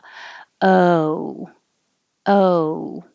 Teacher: oh it starts lower and then moves up to ooh but i would actually use a schwa because you're starting more with an uh